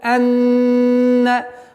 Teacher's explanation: назализация в размере двух огласовок